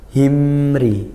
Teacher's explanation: sukun bertemu ro mim sukun bertemu huruf selain mim dan ba hukumnya izhar syafawi dibaca jelas Kenapa syafawi karena mim itu dibibir makhrajnya